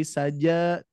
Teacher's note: Yang nempel, tapi saja ja ya al-jauf ya. Al-jauf itu hanya udara yang mengalir, tapi tidak ada yang nempel ya.